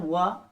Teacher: उसके बाद आता है दंतोष्ठ। दांत और ओठ से जो उच्चारित होने वाला एक हमारा व्यंजन है वह है व, ठीक।